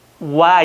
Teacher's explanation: 와 할 때 오를 길게요 짧게요? 짧게 하죠. 아가 길죠. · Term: 이중모음